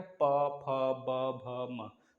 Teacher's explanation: ओष्ठ में जितने प वर्ग है, प, फ, ब, भ, म, सब में दोनों ओठ सटेंगे · सब में दोनों ओठ सटेंगे, ये इस पांचों वाले प, फ, ब, भ, म बोलने में।